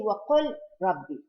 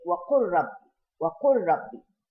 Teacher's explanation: We merge this lam with ra because of the nearby makhraj. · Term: merged